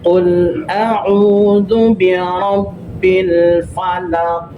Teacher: Ketika kita sukun, kita wasal berhenti waqaf, maka tanda qaf fathah qi jadi dipantulkan karena kita berhenti ya. Qalqala kubra. Pantulnya agak kuat.